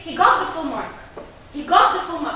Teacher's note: I'm rising at got, and at full mark, I am falling.